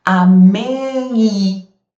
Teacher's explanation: o M vira um I semivogal